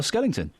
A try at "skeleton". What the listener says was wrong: Yeah, no, not ing. You're saying ing, Skellington. It's skeleton.